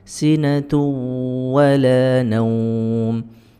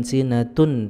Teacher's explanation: tanwinnya masuk ke huruf wawu kemudian didengungkan. Sinatu wala ya, bukan sinatun tapi sinatu wala naum. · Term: idgham bi gunnah